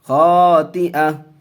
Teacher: गोल ता पर वक्फ करेंगे तो हाय साकिना बना करके वक्फ करेंगे।